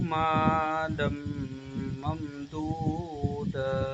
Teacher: وَجَعَلْتُ لَهُ مَالًا مَمْدُودًا، یہاں پہ ادغام یرملون کا قاعدہ لگے گا، کیونکہ تنوین کے بعد حرف یرملون میں سے میم آ گیا، تو یہاں پہ ادغام یرملون کا قاعدہ لگے گا، گنہ کر کے پڑھیں گے